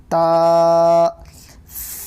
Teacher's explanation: زبان کی نوک کو سامنے کے دو دانتوں کے جڑ میں لگانے سے تا ادا ہوتا ہے